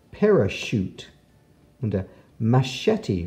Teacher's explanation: there's lots of words with CH where the CH makes the SH sound of sh